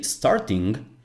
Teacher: You don't say n and then g, starting. No, you are making one single sound, starting. That's a velar nasal.